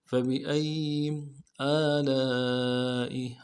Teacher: لام کے ساتھ الف مدہ ہے، الف مدہ کے اوپر مد اصلی ہے، 3 الف مدار میں کھینچیں گے · حمزہ کے اوپر کھڑا زبر ہے، ایک الف مدار میں کھینچیں گے ، لام کے ساتھ الف مدہ ہے، الف مدہ کے اوپر